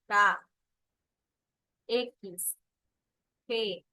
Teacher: Con desplazamiento del post dorsal de la lengua hacia la zona velar. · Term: los velares